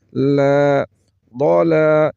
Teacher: ضا لم کے اوپر کھڑا زبر ہے ایک الف کے برابر کھینچ کر پڑھیں گے